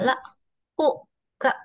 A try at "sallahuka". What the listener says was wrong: there you make a mistake. Don't go slow. Sal lahuka. You have to pronounce the whole word. Sal lahuka. No, sal lahuka.